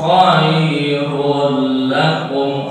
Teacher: Khairul domah tain bertemu lam idgham ila gunna.